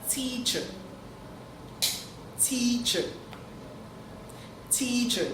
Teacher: the first part of the word is said out loud while the second part is faint? So it's not teacher with both parts being said out loud. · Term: loud and faint